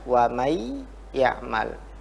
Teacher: Jadi nunnya hilang menjadi ke ya. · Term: idgham